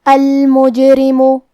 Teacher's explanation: را کے نیچے زیر ہے تو یہاں را کا حکم ہے ترقیق، ہم حرف الرا کو پتلی آواز میں پڑھیں گے